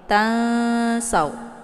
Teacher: ikhfa awsat ini kalau dibandingkan antara tingkat kesamaran dan dengungan itu seimbang atau setara. Jadi nggak ada yang lebih dengung dan nggak ada yang lebih ke samar.